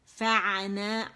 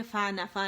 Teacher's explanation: عین کا مخرج پکڑیں گے اور دونوں باریک ہیں، بلکہ نون الف بھی باریک ہے، ٹھیک ہے.